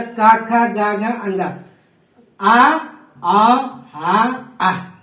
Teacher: ये सब बोले जाने वाले कंठ से हैं